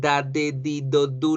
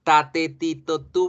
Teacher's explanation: Fíjense cómo la punta de la lengua no toca la parte de atrás de los dientes. Lo que toca es los alveolos.